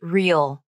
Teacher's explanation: See the lips retract and the tongue move up for the EE vowel.